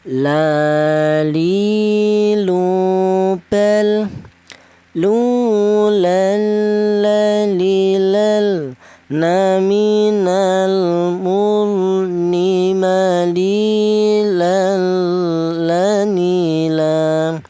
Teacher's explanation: Kemudian huruf lam. Huruf lam ini keluarnya huruf berasal dari ujung lidah menyentuh langit-langit mulut ya.